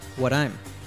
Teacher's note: the T at the end of what is pronounced as an American T, D sound